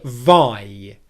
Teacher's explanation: we stress the first part of the diphthong. There are two sounds in this diphthong we stress the first: The first part of this diphthong makes up three-quarters of the length